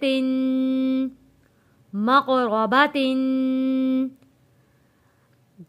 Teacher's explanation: दो ज़ेर को हमने यहाँ पे गुन्ना अदा किया है।